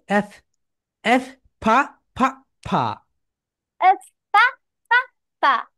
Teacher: এফ, উপরের দাঁত নিচের কি বল, উপরের দাঁত নিচের ঠোঁটের সঙ্গে টাচ করবে।